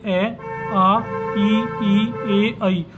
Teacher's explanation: जिसके उच्चारण में होठ गोलाकार नहीं होते, मतलब पूर्ण वृत्त के समान नहीं होते, गोल नहीं होते · पूर्ण गोल नहीं बन रहे, मतलब गोल आकृति नहीं बना रहे, गोल आकृति नहीं बनाते। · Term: अवृतमुखी स्वर